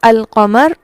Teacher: القمر میں لام کی پوری پراپر ادائیگی ہو رہی ہے، اسے ہم کہتے ہیں کہ یہ لام کا اظہار ہے